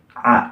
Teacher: ain itu adalah dekatnya akar lidah dengan dinding kerongkongan, akan tetapi tidak menempel